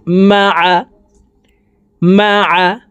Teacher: মিম জবর মা, আইন জবর আ, মা আ। আইন হরফকে হলকের মধ্যখান থেকে চাপ দিয়ে উচ্চারণ করে পড়ব